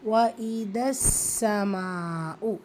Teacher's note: இந்த சீனில் ஷத்தா இருக்குது, அதற்குரிய அழுத்தம் கொடுத்து ஓதுங்க.